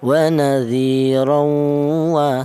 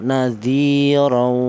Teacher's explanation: tanwin ini langsung menyatu ke huruf wawu beserta ada dengnya 2 ketukan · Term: idgham bi gunnah